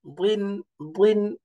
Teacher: দাদের নিচে কাসরা একটু গোল করে পড়তে হবে